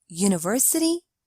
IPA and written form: ˌjuːnəˈvɜːsəti (university)